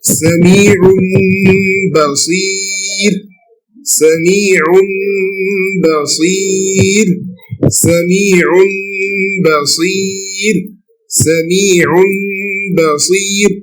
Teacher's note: Why? Because al-mim shares the same point of articulation with ba, and shares the same manners with nun. So it's very easy, just change it to mim. · it is very easy to pronounce nun sakina or tanween by changing both of them to mim. When you change both of them to mim, it will be very easy to pronounce. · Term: al-iqlab